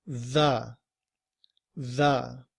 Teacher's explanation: The word 'the' in IPA begins with this symbol here, which is the th sound that we make when we're also using our voice